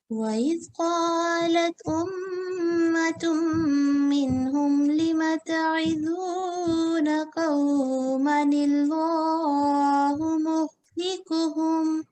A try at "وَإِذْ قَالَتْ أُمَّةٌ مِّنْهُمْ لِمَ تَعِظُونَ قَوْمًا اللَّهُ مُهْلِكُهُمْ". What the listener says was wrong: اس میں نلہ آپ نے بھاری کر دیا, نلہ. باقی ماشاءاللہ ٹھیک پڑھا آپ نے, یعنی قوما شارٹ کیا.